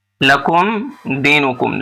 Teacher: اظہار شفوی اس لیے کہ میم ساکن کے بعد دال ہے